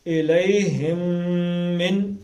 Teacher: یہ میم اور میم آپس میں ادغام کرنا ہے, ملانا ہے دونوں